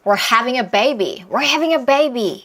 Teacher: having이 중요한 단어고 were는 먹어야 돼요. 먹고 뱉어요. we're having a baby.